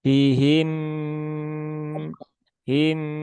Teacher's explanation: ini dibaca dengan cara ditahan tiga harakat ya jangan tergesa-gesa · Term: idgham mimi